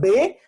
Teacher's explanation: es una bilabial oclusiva sonora